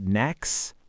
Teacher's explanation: Plus, we drop sounds. Next becomes nex